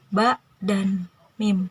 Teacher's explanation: Yang pertama adalah saftaniyah, di mana dalam harus ini keluar huruf di antara dua bibir atau bilabial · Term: saftania